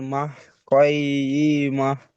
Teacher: আয়াতের শেষে গোলতা আসে, গোলতাকে বাদ দিয়ে হা সাকিন করে পড়তে হবে। হা কই সাকিন ই করে মা।